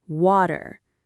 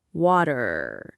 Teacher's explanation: We call that a flap T. And that R at the end, we really pronounce it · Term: The American R